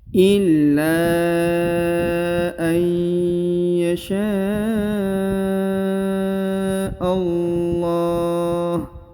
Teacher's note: Maka huruf sya harus dipanjangkan 5 harokat ya.